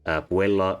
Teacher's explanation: Puella is three syllables, so the stress syllable is the middle one.